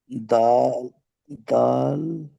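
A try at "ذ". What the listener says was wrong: দাল নয়, ওটা জাল। জাল মিম জাবার জাম। দাল নয়, জাল মিম জাবার জাম।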